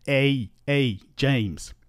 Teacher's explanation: we have the vowel that starts in the at position and ends in the it position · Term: diff thongs, diphthongs